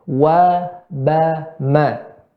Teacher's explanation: huruf yang keluar dari kedua bibir